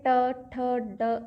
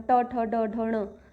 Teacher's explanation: थोड़ा सा झटका लगता है मतलब जो अचानक वाली साउंड आती है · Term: मूर्धा